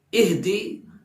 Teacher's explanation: ہا کو ہم حلق سے نکالیں گے